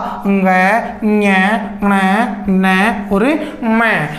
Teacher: नासिकेय यानी कि जिनका उच्चारण किससे किया जाता है, नाक से। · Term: नासिकेय व्यंजन